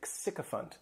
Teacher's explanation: this noun has 3 syllables and the stress is on that first syllable. The spelling may throw people off to the pronunciation, but that SYC is just pronounced sycophant.